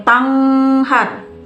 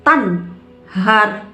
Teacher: Fala mad tabi'i, sebab ada fathah menghadapi alif. Tan, nun mati menghadapi huruf idhar. Tan, maka dibacanya harus jelas. Tidak boleh samar dan tidak boleh dengung. Tidak boleh tanghar, tapi harus tanhar.